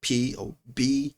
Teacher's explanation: There is a, you call it a pop filter, just in case things that didn't caught, like the plosive that you speak when you say the word P or B, there's like a push of air out right out of your mouth